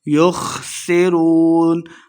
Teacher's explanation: يُخْسِرُونَ خا کو موٹا پڑھنا ہے، سین پہ سیٹی کی آواز آئے گی۔